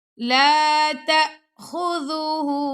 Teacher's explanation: خا کو موٹا پڑھیں گے، زال کو باریک پڑھیں گے اور اس کو نرمی سے بھی پڑھیں گے، لا تأخذوه سنة